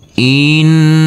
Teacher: Huruf nun harus kita tekan, kita tahan, serta kita dungkan karena ini adalah bacaan ghunah. Langsung huruf nun masuk ke lafaz Allah.